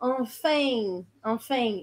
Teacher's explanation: Eles fazem esse som mais agudo, mais anasalado, enfin, enfin. Eles meio que colocam um i no meio